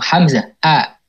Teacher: Hamzah kan makhrajnya di mana? Di tenggorokan. Tepatnya di aqsal halq. Tapi kan A itu seperti yang kita rasakan mudah aja gitu ya keluar.